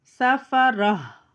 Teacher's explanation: जो गोलता होती है उसके नीचे दो ज़ेर की तनवीन होती है, तो वफ़ करते वक्त उसको कैसे पढ़ते हैं, हा की आवाज़ में बदल के पढ़ते हैं